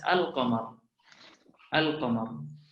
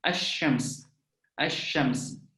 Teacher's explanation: Sementara dalam syams yang bermakna matahari, itu huruf lam tidak dibaca, langsung dimasukkan ke dalam huruf shin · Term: asy-syamsiyah